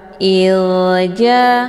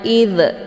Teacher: zal sukun, jadi cara bacanya dialirkan dengan bacaan lembut. Ilja, jadi jangan id, ya, dipantulkan, itu bacaan yang salah karena za ini bukan bagian daripada huruf qalqalah.